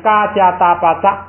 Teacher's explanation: 送气变不送气，这样的话呢，既是高平调又变成不送气